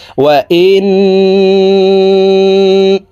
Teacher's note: এই হামজা তাশদি ওয়ালা নুনের সাথে নাকের বাশি থেকে গুন্নাহ করে পড়বো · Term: ওয়াজিব গুন্নাহ